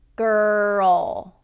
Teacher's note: That tongue tip is going to come up and touch the roof of your mouth. So girl, just said by itself, is a dark L.